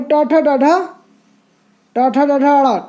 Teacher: मूर्धन्य मतलब तालु के ऊपर से बोले जाने वाले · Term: मूर्धन्य व्यंजन